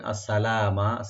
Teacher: সা ওপেন রাখবেন, লাম এখানে এক আলিফ টানবেন, মিমে টান নাই